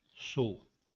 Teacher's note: Em muitos dialetos não é pronunciado como ditongo, mas sim como uma vogal.